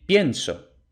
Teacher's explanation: También tenemos diptongo en pienso, porque es pien y pronunciamos la i y la e en el mismo golpe de voz, en la misma sílaba, y luego aparte otra sílaba, so.